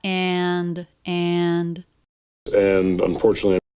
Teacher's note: usually this word is reduced but here it's not it's fully pronounced and the a vowel is even a little bit longer he holds on to that and and and unfortunately and unfortunately